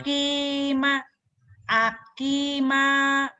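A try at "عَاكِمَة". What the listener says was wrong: Salah. Iya, panjang pendeknya belum pas. Coba. Ain. Akima. Akima.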